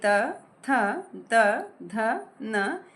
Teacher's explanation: इनका उच्चारण दंत से होता है। जब हम ये शब्द बोल रहे हैं जब हम ये अक्षर बोल रहे हैं तो इनके उच्चारण में दांत का प्रयोग हो रहा है। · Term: त वर्ग